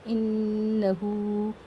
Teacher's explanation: یہاں آپ دیکھ سکتے ہیں نون کے اوپر تشدید ہے، اس نون کو غنّے کے ساتھ ناک میں آواز کو روک کر پڑھیں